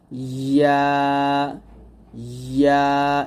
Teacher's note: জিহ্বার মধ্যখান তার বরাবর উপরে তালুর সঙ্গে লাগবে